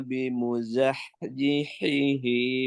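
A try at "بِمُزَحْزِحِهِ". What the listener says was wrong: Ulangi bimuzahzihihinya. Zainya jangan lupa ya. Zahzi. Zihihi. Zainya ya. Zainya.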